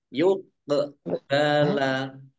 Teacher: kof sukun, bacaan kolkolah dibaca memantul